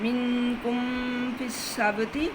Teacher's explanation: منکم فی السبت دونوں حروف شفوی ہیں، اس لیے ادغام شفوی ہوگا